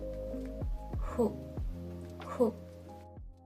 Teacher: Pero no es una F. Su pronunciación en realidad está a medio camino entre una F y una H.